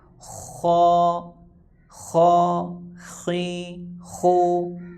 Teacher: غین زیر غی، غین پیش غو، غا غی غو. خا زبر خا، خا بھی پر یعنی موٹا ہوگا، حروف مستعلیہ میں سے ہے